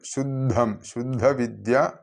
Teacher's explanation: ശുദ്ധം ദായും ധായും ആണ് അപ്പൊ ശുദ്ധം എന്ന് തന്നെ ഉച്ചരിക്കണം ഘോഷ ശബ്ദമാണ്